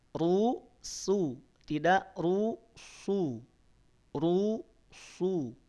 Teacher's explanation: jangan serupa dengan Shad ru suu tidak ru suu ru su Sin saat kita ucapkan terutama Sin yang harakat damah itu pastikan pangkal lidahnya tidak naik kita pastikan Tidak melibatkan pangkal lidah kita ataupun tidak kita naikkan